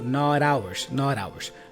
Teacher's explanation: the T for not here has a flap sound which then joins with ours